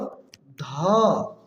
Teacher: ধ হলো মহাপ্রাণ বর্ণ, বাতাসের চাপ বেশি থাকবে